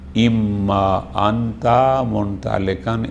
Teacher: ہونے کی بنیاد پر ایک کو دوسری میں ادغام پر گیا، نون کو میم میں تبدیل کیا، میم کو میم میں ادغام پر گیا